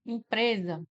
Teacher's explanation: E aí quando veio para o português, continuou sendo escrito com S, né, ó. E o S aparece entre duas vogais, o que ele confere o som de Z.